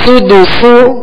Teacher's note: دونوں سین میں سختی کی آواز ہوگی، یعنی سیٹی کی آواز ہوگی، سختی سے ادا کریں گے اور باریک پڑھنا ان کو